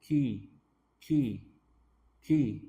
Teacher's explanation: Makhraj atau tempat keluarnya sama kayak qaf. lidah bagian dalam, paling bagian dalam, pangkal lidah, tapi dia ke depan sedikit. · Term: kaf